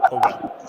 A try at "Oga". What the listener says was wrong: No, don't say with the British accent. Now you're making the person poor. When you say Oga is like the person is, he's Oga.